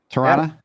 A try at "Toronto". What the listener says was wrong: Pretty close. Closer. You don't pronounce the second T. You can say Toronto. Toronto won't say Toronto because that's not really the accent.